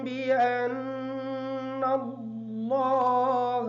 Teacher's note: بأن اللہ کا جو نون ہے یہ نون مشدد ہے، اس نون کا غنہ ہوگا